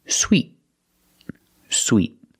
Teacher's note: t is a stop T sweet I do not say sweet I stop the air with my tongue and make a stop T